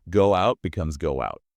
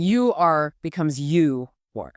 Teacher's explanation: This often happens after a word ending in an oo or ow sound. We slide a little W sound in between them. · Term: W linking